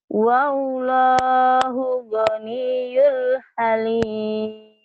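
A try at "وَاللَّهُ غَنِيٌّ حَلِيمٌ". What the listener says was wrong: Goniyon, tad idhar. Yon. Wallahu ghaniyun halim. Jadi kalau seperti ini setelah nun mati atau tanwin idhar.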